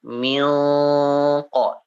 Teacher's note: Misalkan milqa itu agak sedikit berubah ya, karena dia termasuk huruf isti'la ya, huruf-huruf yang terangkat dan itbaq juga ya. Kalau huruf qa maka agak sedikit tebal ikhfanya